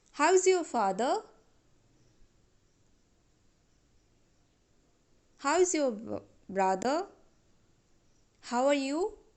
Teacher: how are you how is your father our tone is rising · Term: rising tone